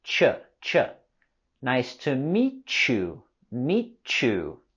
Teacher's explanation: And with the words meet you, we can link them together with a ch sound. Ch. Nice to meet you.